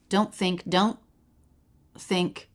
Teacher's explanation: I think I'm hearing a little tiny lift